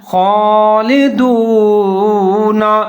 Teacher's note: زیر ہے، دال کے اوپر پیش ہے، واو ساکن ہے، تو دال اور واو ملا کے پڑھیں گے، تھوڑا سا لمبا کر کے پڑھیں گے، ہونٹ گول کریں گے ، خالدون، نون کے اوپر زبر لکھا ہوا ہے لیکن وقف